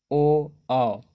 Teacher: ओ औ होता है जो कंठ और ओठ दोनों से होता है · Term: कंठ ओष्ठ